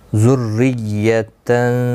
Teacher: ذرا زیر کی وجہ سے باریک پڑھا جائے گا